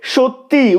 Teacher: সত্যি করা হচ্ছে শেষে একটা স্বরধ্বনির আগমন ঘটছে তাই এটা অন্তঃস্বরাগম